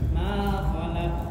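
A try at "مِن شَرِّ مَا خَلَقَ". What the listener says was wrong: Nah, itu kan ada terputusnya sedikit. Nah, jangan sampai diusahakan ee kita berusaha jangan sampai seperti itu.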